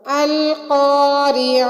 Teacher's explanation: القاریعہ میں قاف موٹا ادا ہوگا اور عین حلق کے بیچ سے ادا ہوگی